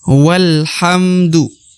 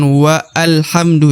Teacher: seperti ini ya huruf wau setelahnya Alif dan setelahnya lam Nah maka Alif di sini tidak dibaca lagi ya tidak dibaca lagi bukan dibaca Dua harakat tapi langsung melebur masuk ke huruf huf lam contohnya walhamdu Jadi